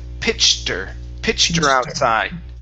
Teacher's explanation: Pronounce that t. Okay. And then connect that to the word her. Okay. Drop that H.